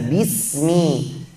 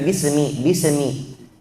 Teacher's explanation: Kasih hak huruf sin, ada sifat rakhawah, harus mengalir.